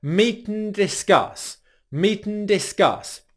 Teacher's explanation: So meeten, discuss, meeten, discuss. Our tongue actually stays in the same position for the T, N and D sounds. And all that happens is the airflow transitions from the T, where it pauses out our mouth, out our nose for the N, and then back out our mouth for the D.